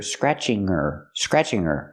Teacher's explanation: her is not a stressed word, so we don't pronounce the H.